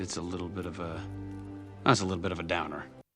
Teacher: we hear that the t's are pronounced as a flap te like du d da so little is pronounced as little